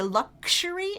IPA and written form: ˈlʌk ʃə ri (luxury)